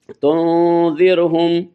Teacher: یعنی نون پہ ناک میں آواز پیدا کرنی ہے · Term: غنہ